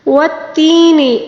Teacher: والتین والزیتون، والتین یہاں پر یا مدہ ہے، یا ساکن سے پہلے والے حرف کے نیچے زیر ہے، اس کو یا مدہ کہا جاتا ہے۔ اس کو تقریباً 1 الف کے برابر کھینچ کر پڑھنا ہوگا